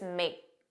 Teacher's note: you didn't hear that k, it was just make